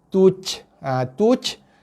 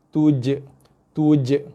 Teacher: Kita sangkakan bunyi qalqalah, rupanya itu bunyi hembusan nafas. Qalqalahnya j.